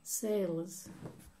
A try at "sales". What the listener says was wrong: It's got a Z.